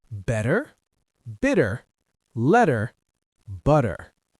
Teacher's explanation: The T sounds like D when it's in the middle of a word between two vowels.